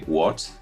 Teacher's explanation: you can see here i'm racing a little bit my voice the second tone similar to the question what for example if i cannot hear well what has been said i can say what it's like a little step up